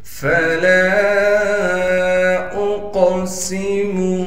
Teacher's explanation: سین میں سیٹی ادا کر کے پڑھیں گے